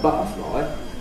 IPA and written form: ˈbʌʔəflɒɪ (butterfly)